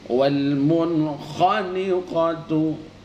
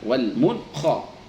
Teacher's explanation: Kemudian ada nun sukun bertemu dengan kha, wal munkhaniqatu, ya, tidak didengung namun diterangkan